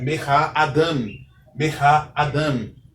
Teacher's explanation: A sílaba tônica é a última sílaba nesta palavra